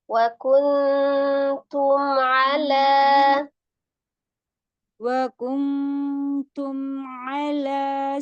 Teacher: izhar syafawinya itu tidak ditahan, hanya dialirkan mimnya. Nah, jadi jangan juga ditahan wauntum ala enggak wauntum ala cuman diselesaikan aja dialirkan yang ditahan itu ikhfanya.